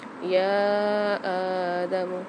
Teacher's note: یا آدمو میں یا کے اوپر کھڑا زبر بھی آ رہا ہے، مد بھی آ رہا ہے، تو اس کو ہم زیادہ کھینچ کے پڑھیں گے، اور الف کے اوپر بھی کھڑا زبر آ رہا ہے تو یہاں ہم دونوں حروفوں کو کھینچ کے پڑھیں گے۔